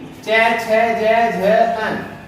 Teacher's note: हमारे मुख के अंदर जो तालु होता है, वहां से इन वर्णों की शुरुआत होती है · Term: चै वर्ग